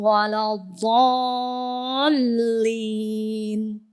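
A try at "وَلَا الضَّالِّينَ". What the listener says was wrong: Enggak, ini masih keseret tebal ya. Dotnya belum pas juga tuh. Bukan walau enggak. Ya, jadi masih keseret tebal lamnya.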